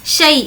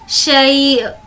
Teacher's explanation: شیء کو پڑھتے وقت حمزہ کی آواز بھی نکالیں گے